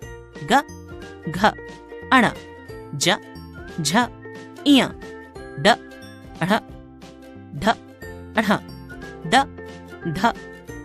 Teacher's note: जिन ध्वनियों के उच्चारण में स्वर तंत्रों में कंपन पैदा होती है उन्हें सघोष कहते हैं प्रत्येक वर्ग के तृतीय चतुर्थ तथा पंचम वर्ण ग घ अण